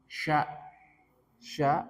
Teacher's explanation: di sini ada udara menyebar antara lidah dan langit-langit, ada udara menyebar ke seluruh penjuru. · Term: shin